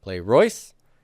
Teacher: we lose the epsilon, and we get a long diphthong, oi, right, with that circumflex.